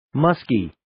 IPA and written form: 'məskiː (Musky)